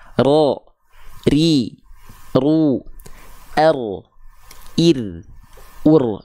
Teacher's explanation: disebut dengan warro waitakririn juil jadi dia punya sifat namanya takrir takrir itu bergetar ya lidah kita tapi bukan dengan getaran yang berlebihan · dia getarannya sedikit aja, nggak banyak-banyak, tapi tetap tegas dan lugas, jelas.